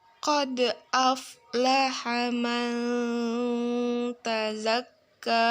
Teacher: Garis nomor 15 yaitu hukum bacaan ikhfa karena huruf nun sukun bertemu dengan huruf ta. Cara membacanya samar dengan dengung